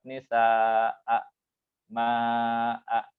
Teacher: Ma'an juga tetap 2 harokat.